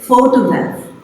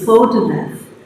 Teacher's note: So, the stress is on the first syllable, photograph.